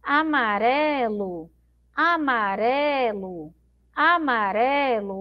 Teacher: o amarelo, a sílaba mais forte é esse ré aqui no meio